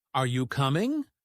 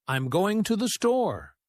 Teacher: we tend to use a rising intonation for yes or no questions like, Are you coming? But for statements, we use a falling intonation